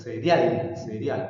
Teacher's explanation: Entonces el acento está en al, porque si tú pronuncias cereal, cereal, correcto, el acento está en la sílaba al. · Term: acento prosódico